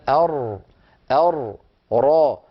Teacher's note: فنقول الراء من طرف اللسان مع ما يحاذيه من الحنك الأعلى، هذا المخرج.